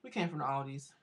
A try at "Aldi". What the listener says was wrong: Okay. No S on Aldi, okay?